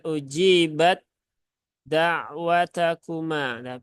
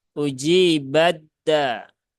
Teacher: Jadi jangan diidharkan ya, jangan ujibat da'watakuma, tetapi dia anggap saja ini huruf taknya ini eh, melebur kemudian langsung masuk ke huruf dal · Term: idgham